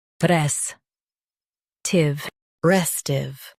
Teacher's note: Stress r e s and keep tiv light.